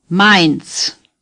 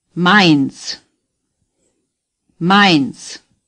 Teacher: It is pronounced as in the English word my. Mainz, The Z is pronounced like TS.